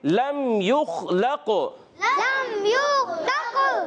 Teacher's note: خا کو پر پڑھیں گے، موٹا ادا کریں گے، قلقلہ نہیں کریں گے